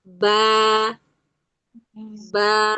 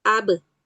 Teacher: rahang tidak me merenggang. Beda ba berbaris fathah dengan ba sukun di sini adalah rahangnya tidak merenggang ya yang berharakat ba rahang ikut turun bibir juga turun tapi pada ba sukun ab sukun qalqalah ya di sini maksudnya sukun qalqalah maka keluarnya dengan merenggangkan kedua bibir, namun tanpa merenggangkan rahang.